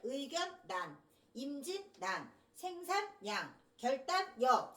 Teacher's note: 3음절인데 앞에 오는 두 글자 끊어서 읽었지. 그래서 앞에 오는 두 글자가 뒤에 오는 거를 약간 꾸며주는 방식으로 살짝 휴지를 둡니다 · 3음절 한자어들 중에 리을이 니은으로 바뀌는 거 유음의 비음화